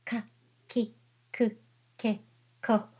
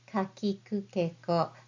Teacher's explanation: You don't need to aspirate too much like ka, ki, ku, ke, ko, but just say softly ka, ki, ku, ke, ko.